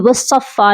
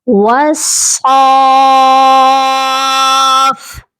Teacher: صاد کے اوپر مد لازم ہے اور ہم نے اس کو 5 سے 6 الف تک لمبا کر کے پڑھنا ہے